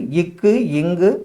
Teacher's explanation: இது எப்படி பிறக்கும்னு பாத்தீங்கன்னா நா முதல் அன்னம் முதல் பிறப்பதால் உண்டாகும் எழுத்து